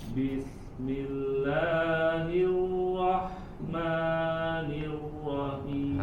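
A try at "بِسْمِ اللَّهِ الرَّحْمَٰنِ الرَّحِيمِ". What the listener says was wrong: Nah, lebih lagi, lebih dari 2 harokat. Bismillahirrahmanirrahim. Kepanjangan Kak. La 2 harokat.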